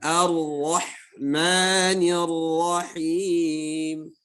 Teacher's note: jadi rohnya jangan tipis, tebal. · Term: ro tebal